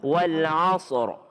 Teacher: Ra-nya tebal. Kenapa? A-nya fathah.